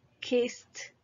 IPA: kɪst